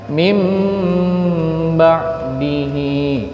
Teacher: jangan pakai n tetapi pakai m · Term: iklab